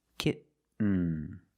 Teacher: You do the stop T, kit. You don't release, and then you fall to an N, kitten. When you make the stop T, the tongue is up, almost in the N position, so you don't have to change much.